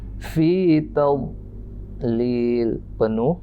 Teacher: Kedua pinggir lidah kita naikkan ke atas full, tapi tidak bunyi dha